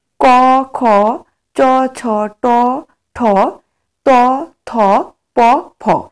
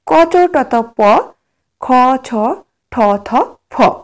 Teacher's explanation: বর্ণ সম্পর্কে প্রতিবর্গের প্রথম ও দ্বিতীয় বর্ণের উচ্চারণের সময় কণ্ঠস্থ স্বরতন্ত্রীর কম্পন হয় না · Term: অঘোষ বর্ণ